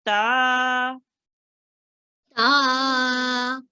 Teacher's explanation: we make 2 seconds long, or 2 counts, because there is a alif after the ta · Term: alif madya